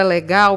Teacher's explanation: lé é uma sílaba átona, porque você pronuncia com menor intensidade, com menos força.